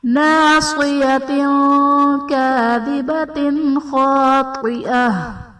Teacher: ناصیۃ کاذبۃ خاطئہ، ناصیۃ تا کے نیچے دو زیر کی تنوین، تنوین کے بعد حروف اخفا میں سے کاف ہے تو یہاں پر اخفا کا قاعدہ ہوگا، یعنی تنوین میں ہم غنہ کر کے پڑھیں گے